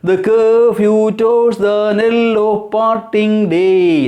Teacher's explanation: unaccented comes first, accented second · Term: iambic pentameter